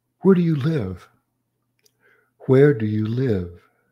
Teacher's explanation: hear the falling intonation on live where receives the major intonation because it signals that a question · where receives the major intonation because it signals that a question is coming